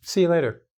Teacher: In see ya, we change and we drop the ending here. We put see and you becomes ya.